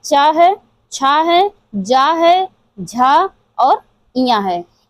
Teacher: च वर्ग जो हमारा उच्चारित होता है, वह तालव्य से होता है। तालव्य या तालु भी कहते हैं इसे।